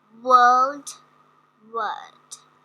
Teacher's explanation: it's like an extended long schwa sound. The lips, tongue, and the jaw are relaxed.